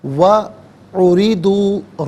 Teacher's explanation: را کے نیچے زیر ہے، را کو باریک کر کے پڑھیں گے، واو علیحدہ، اُرِضُوا علیحدہ ملا کر پڑھیں گے.